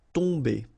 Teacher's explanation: You don't pronounce the M at all, so it's really a nasal, so it goes in your nose.